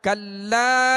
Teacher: یہاں لام کے ساتھ الف ہے تو 1 الف کی مقدار کھینچ کر پڑھیں گے. الف مدہ ہے، الف سے پہلے زبر آ گیا لام کے اوپر، تو حروف مدہ کی جو ہم نے کل سبق کی مشق کی تھی یہ اسی میں سے.